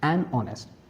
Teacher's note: Because honest begins with a vowel sound. O, honest with H being silent and O being the first vowel sound to pronounce. So, article an will be used, an honest.